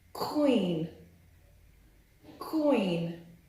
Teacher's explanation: When pronouncing Q in these words, it appears as though you're gliding from the sound K to the sound Wa